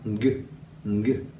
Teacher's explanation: For the NG sound, the back of our tongue reaches up and touches the roof of our mouth.